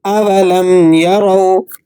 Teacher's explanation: یہاں پر جو واو ہے یہ واو لین ہے، اسے آپ نے نرمی کے ساتھ پڑھنا ہے، کھینچ کر نہیں پڑھنا۔